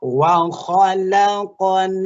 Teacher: Bunyi mim mati ketemu dengan a, suaranya jangan diputuskan. Tapi mengalir.